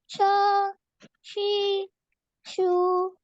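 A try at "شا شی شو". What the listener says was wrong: A bit longer.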